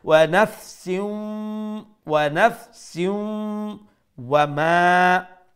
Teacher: we will pronounce the tanween with idgham and with gunna